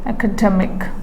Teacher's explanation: Okay, that means this has 4 syllables, polysyllabic word. So the primary stress is on the second syllable from the end